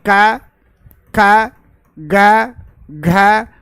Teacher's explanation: अ आ क वर्ग और ह का उच्चारण स्थान क्या होता है कंठ होता है